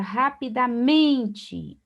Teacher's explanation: Observe que o men é a sílaba mais forte, é a penúltima sílaba. Se eu tenho a penúltima sílaba mais forte, eu sei que eu tenho então uma paroxítona.